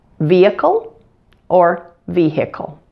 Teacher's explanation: to pronounce the H in the word if you like but most commonly that H is silent